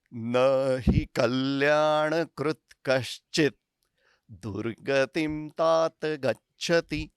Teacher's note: ही की मात्रा ह्रस्व छोटी वाली होने की वजह से मैं ही और कल्याणकृत कश्चित ये शब्द सब एक साथ ही बोल रहा हूं